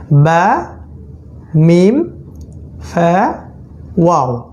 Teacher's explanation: বা, মিম, ফা, ওয়াও, চারটা ঠোঁটের সাথে সম্পৃক্ত। এটা একটা গ্রুপ করতে পারেন, এটা ঠোঁটের সাথে সম্পৃক্ত।